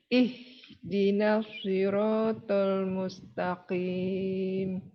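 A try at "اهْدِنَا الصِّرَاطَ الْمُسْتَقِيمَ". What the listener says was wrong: Ketika dialirkan, tetap makhrajnya di bawah, tenggorokan bagian bawah, ya. Jangan naik.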